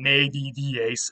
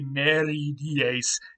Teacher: the first D changed to an R in Latin to dissimilate and make it easier to say the word